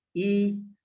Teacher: इ बोलोगे तो आपके जीभ का सामने वाला भाग क्रियाशील रहेगा। मतलब सामने वाला भाग प्रभावित होगा।